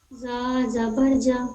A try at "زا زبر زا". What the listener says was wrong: جبر نہیں زبر، زبر ہے زے سے ہے، جا نہیں زا،